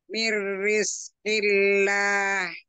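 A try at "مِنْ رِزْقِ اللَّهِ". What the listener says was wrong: Yuk, ro-nya jangan digulung. Mir, mir, tidak ro. nggak digulung. nempel itu, ya, kalau nempel ke langit-langit, bukan begini, Bu. Ini langit-langit nih, langit-langit mulut kita ya, bagian atas. Ini yang naik nih hurufnya, ya, lidahnya yang naik nih. Ini rongga mulut, ya. Jadi bukan begini. Mir, tidak mir, tapi mir. jangan dijauh, mir, jangan jauh-jauh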